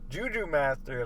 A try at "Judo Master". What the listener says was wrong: Judo, you said Juju. Judo? It's Judo Master.